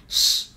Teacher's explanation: chúng ta sẽ hơi tròn môi ra một chút và môi của chúng ta hơi loe ra, chúng ta sẽ phát âm nó là sh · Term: âm sh